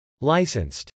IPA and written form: lˈaɪsənst (licensed)